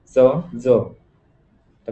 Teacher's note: चंद्र व जग या शब्दातील पहिले व्यंजन तालव्य प्रकारात मोडते